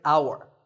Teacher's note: The first sound is an ow sound, which is a vowel sound, so this is an hour.